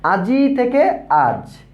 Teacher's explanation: আমি বলতে চাচ্ছি যে এখানে আ জ ই অর্থাৎ আজি, এই ই ধ্বনিটা কিন্তু এখানে নেই, অর্থাৎ এখানে শুধু আ এবং জ ধ্বনি রয়েছে, এখানে ই ধ্বনিটি লোপ পেয়েছে। এজন্য যেহেতু ইটা শেষে ছিল এজন্য আমরা এটাকে অন্তঃস্বরলোপ, অন্তঃস্বরলোপ বলছি।